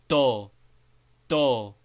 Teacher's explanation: with tip of tongue placed on back of teeth instead of on front ridge of roof of mouth. D, like in bend, pronounced broadly, or in hate, shortly pronounced but quite pure, entirely without the slight drawling e sound often heard after the English vowel, as beno, beno.